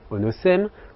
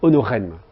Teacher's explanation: le S intervocalique là s'est transformé en R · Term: rotacisme